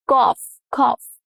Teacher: The OUGH cluster has multiple pronunciations, and here it is the off sound.